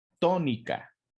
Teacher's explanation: la sílaba tónica se encuentra en la ante penúltima sílaba